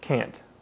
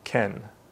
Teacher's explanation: when you say can't you make a nasal sound and you should feel a vibration in your nose